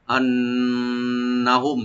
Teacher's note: ওয়ালাউ আন্নাহুম, আন্নাহুম হামজাকে রাইট দিয়ে নুন মুসাদ্দাত এখানে ডাবল করে পড়বো আমরা গুন্না সহকারে, ওয়াজিব গুন্না। আন্নাহুম, নুনে টান হবে না, শুধু গুন্না হবে। মিম সাকিন এখানে আমরা জাহার করে পড়বো আন্নাহুম।